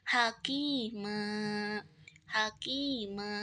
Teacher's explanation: karena berada di akhir kalimat, di wakof, maka dibacanya sepanjang 2 harokat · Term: mad iwad